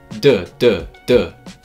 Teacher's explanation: you're also used to saying D with the vibration and without the puff du du du you can feel the throat vibrating du du · You can feel the throat vibrating. D, d, d. There's no puff.